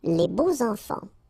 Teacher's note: even if you've got this X, well, phonetically it will be like Z, so like if it would be an S, okay? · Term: liaison